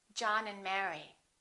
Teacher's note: we reduce the A and the D. Those disappear often.